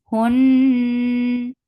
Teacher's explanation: Nun gets kunna. This kunna is akmal, so keep the sound in your nose for a longer time.